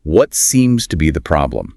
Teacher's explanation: And it has that downward inflection typical of what questions.